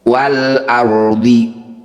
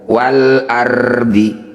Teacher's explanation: cara baca ro dengan tebal kita kurangi getaran pada huruf ro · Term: ro tafkhim